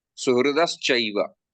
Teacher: and sa is dental. So this dental sa turns into palatal sha.